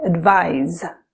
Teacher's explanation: When you see the S, pronounce it like the voiced Z sound, like in lies.